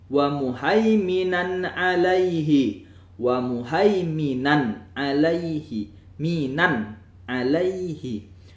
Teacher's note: Tanwin berjumpa dengan ain. Maka hukum bacaannya ialah izhar yaitu dibaca dengan jelas